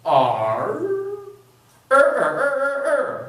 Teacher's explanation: so if this is my mouth that is my tongue and when I say our I have to bring my tongue way back in my mouth